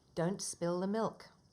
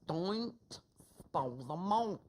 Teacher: >> In our continents, one of the strongest features is known as the dark L. That's when the L is only partially sounded or not at all